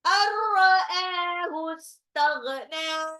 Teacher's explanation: nun sukun ketemu ra, idgham bila guna, langsung lebur tanpa ditahan. Ra'ahu, a-nya mad tabi'i 2 harokat.